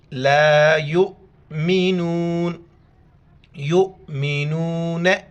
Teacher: یا کو امزہ کے ساتھ ملیں گے اور جھٹکے کے ساتھ پڑھیں گے